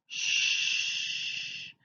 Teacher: the air is not cut off it continues to flow through Shh through above her tongue and through her teeth and her